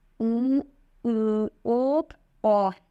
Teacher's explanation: इसमें ओठों के आकार गोलाकार बनते हैं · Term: व्रतमुखी